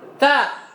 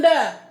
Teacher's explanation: Sifatnya yang berbeda. Ta, dia tipis. Hams, itu yang membuat dia bunyinya seperti itu. Ta, beda dengan da. Da, tidak ada hamsnya.